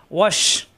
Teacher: শ্বাস আওয়াজ হবে জিহ্বার মাঝখানে উঠে তালুতে।